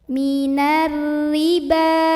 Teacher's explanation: Ada ra yang dibaca secara tarqiq karena ra barisnya di bawah kasroh, maka bacanya tipis, nyantai, ringan, tidak perlu dinaikkan pangkal lidah.